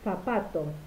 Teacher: la punta de la lengua, hace contacto entre los dientes incisivos superiores e inferiores. El modo de articulación es fricativo, pero es sordo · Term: ápico-interdental fricativa sorda